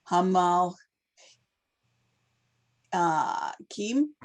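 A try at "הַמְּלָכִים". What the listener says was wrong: Hamelachim. Ha. Ha. Me. Lachim. No, you're adding, you know, it must be your New York accent. You're adding, or whatever, you're adding a lamed sound to that.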